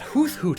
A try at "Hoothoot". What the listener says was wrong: Sorry, did you just pronounce the th in Hoothoot? That's disgusting.